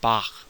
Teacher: It's a velar fricative, as in the German name Bach